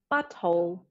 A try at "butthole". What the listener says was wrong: Yeah, she actually said the T's.